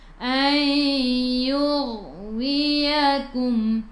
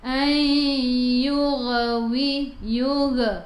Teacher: Ayyug masuk ke dalam ghain. Ghain ada sukun, jangan melantun, jangan yug.